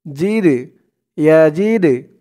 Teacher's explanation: এই দালটা হচ্ছে কলকলার হরফ ধাক্কা দিয়ে পড়তে হবে